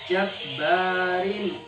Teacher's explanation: kasra tanwin setelahnya ada huruf ain. Ini adalah hukum tajwid izhar halqi. Dibaca jelas.